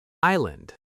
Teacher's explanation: This word has a silent s. We don't hear it at all. I land, not Iceland.